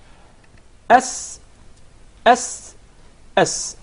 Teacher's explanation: the letter Sin comes from the tip of the tongue and the palates of the 2 front top incisors